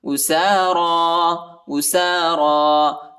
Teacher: سین اور را پر کڑا زبر آیا ہے، اس کو ایک الف کی مقدار تک کھینچیں گے ، اور یا نہیں پڑھا جاتا، یا کے اوپر حرکت نہیں